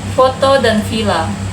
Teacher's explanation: labiodental, yaitu bibir dan gigi. F dan V.